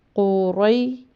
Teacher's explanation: را کے اوپر زبر ہے، آگے یا ساکن ہے، تو اس کو لمبا نہیں کریں گے، اس کو آواز کو سافٹ اور نرم رکھیں گے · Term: حروف لین